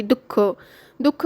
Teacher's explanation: विसर्गाचा उच्चार ह या वर्णाचा झटका देऊन उच्च स्वास सोडून केलेला उच्चार म्हणजे विसर्ग होय · आता अनुस्वार कसा असतो तर स्पष्ट आणि खणखणीत उच्चाराचा असा असतो त्याला आपण अनुस्वार म्हणतो यानंतर विसर्ग विसर्ग म्हणजे काय तर श्वास सोडणे असं सुद्धा आपण विसर्गाला म्हणू शकतो किंवा झटका देऊन ज्याचा उच्चार होतो त्याला विसर्ग म्हणतो